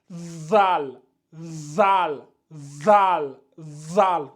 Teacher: votre objectif, c'est de prononcer ici zal, mais en mettant la langue au niveau des dents, au niveau des incisives, ça donne zal, zal, zal, zal.